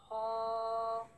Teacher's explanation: For ha and ayn, you pronounce them from the middle part of your throat.